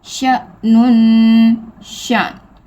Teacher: اب دیکھیں حمزہ ساکن ہے، جھٹکا دے کے پڑھیں گے